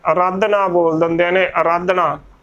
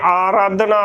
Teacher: ਜਿਆਦਾਤਰ ਅਰਾਧਨਾ ਬੋਲ ਦਿੰਦੇ ਨੇ ਅਰਾਧਨਾ ਪਰ ਇਥੇ ਆਰਾਧਨਾ ਬੋਲਣਾ ਹੈ ਅ ਨੂੰ ਜੋ ਕੰਨਾ ਹੈ ਉਸਨੂੰ ਪੂਰਾ ਬਲ ਬੋਲਣਾ ਹੈ